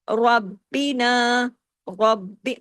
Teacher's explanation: رسولو ربینا، سختی سے جوڑنا ہے، یہاں بھی را ہیوی ہوگا، زبر کے ساتھ ہے. با یہاں ڈبل ہوگا، تشدید کے ساتھ ہے، باریک